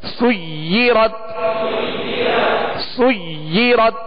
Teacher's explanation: دوہرا پڑھیں گے, دو حرف کی یعنی دیر لگے گی اس کو ادا کرتے ہوئے, یعنی دو مرتبہ پڑھیں گے.